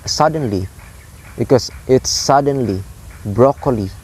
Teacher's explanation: So words example are suddenly, broccoli. So it's like high, low, low, because it's suddenly, broccoli, like that. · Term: dactylic